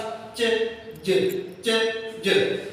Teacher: शुरू में stop sound की तरह हवा जो है ना वो हमारे मुंह में आगे जमा होती है, फिर फ्रिकेटिव साउंड की तरह फ्रिक्शन के साथ रगड़ जाती हुई बाहर निकलती है, तो ऐसी साउंड को हम एफ्रिकेट साउंड कहते हैं।